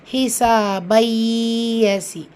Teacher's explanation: தன்வீனை தொடர்ந்து லெட்டர் யா இருக்குது. ஸோ இங்கே என்ன, இதில் இருக்க தன்வீனை நம்ம இணைச்சி ஓதுவோம், அதாவது இங்கே மறைச்சிட்டு இங்கே இணைச்சி ஓதுவோம். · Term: பில் குன்னா